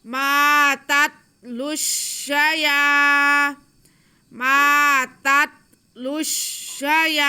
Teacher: शीन को नहीं खींचेंगे, या को एक अलिफ के बराबर हम खींच लेंगे।